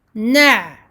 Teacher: Noun fatha ain shadda na'. Là, on a écoulement partiel pour le ain, donc on lui donne une durée moyenne.